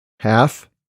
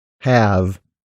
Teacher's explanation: The f is a voiceless consonant, so the vowel sounds before the f are typically shorter than they are before its voice counterpart, the v consonant.